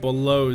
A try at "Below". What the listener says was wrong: Yeah, you said blue. Or if you say below, really weird. Below, yeah, you blow. Sounds like you're saying blow. There's an E in there.